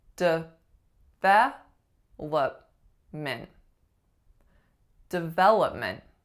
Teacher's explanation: What is the strongest syllable? It's syllable number 2, ve. What's happening with all three other syllables? They are being reduced to schwa. They are a really, really short vowel.